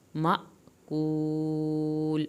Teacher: مأکول، اب یہاں پہ الف کے اوپر جزم آئی ہے، الف کے اوپر جزم یا حمزہ کے اوپر جزم آئے تو جھٹکا لگتا ہے۔ مأکول، واو ساکن کو کھینچے، آخر میں لام کو ہلانا نہیں ہے